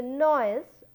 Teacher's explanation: When you say noise, again I am giving more force towards the O vowel, OI are the two vowels here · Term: falling vowel